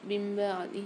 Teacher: ہا کے نیچے کھڑی زیر ہے, ہا کو ایک الف مقدار کھینچ کے پڑھیں گے